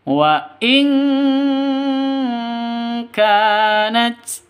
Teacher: nun mati bertemu dengan kaf. Cara bacanya samar didengungkan. · Kanat k-nya panjang dua ketukan karena di sini ada alif yang berdiri ini alif. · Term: mad asli